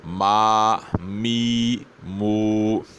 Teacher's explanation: میم کی ادائیگی کے وقت غنہ ہرگز نہیں ہونا چاہیے، بغیر غنے کے ادائیگی ہوگا